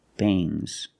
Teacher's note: sound but not a hard strong G these are bangs bangs there's a little G but it's not bang it's softer · When you have S after NG, it makes the nasal sound but it also makes a little G sound, but not a hard, strong G.